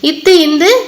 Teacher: நாவின் நுனி மேல்வாய் பல்லின் அடி